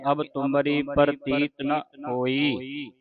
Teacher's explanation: ਇਹ ਨਾਂ ਜਿਹੜਾ ਸੰਗਤ ਜੀ ਲੰਮਾ ਨਹੀਂ ਕਰਨਾ ਇਹ ਮੁਕਤ ਅੱਖਰ ਹੈ ਧਿਆਨ ਰੱਖਣਾ ਜਿਹੜਾ ਮੁਕਤਾ ਅੱਖਰ ਹੁੰਦਾ ਉਹਦੀ ਜਿਹੜੀ ਆਵਾਜ਼ ਨਿਕਲਦੀ ਹੈ